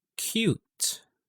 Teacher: Pag pinakinggan natin mabuti, there is the K sound and then followed by a Y sound. Nagkakaroon siya ng K, Y, okay, na sound.